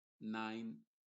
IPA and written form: naɪn (Nine)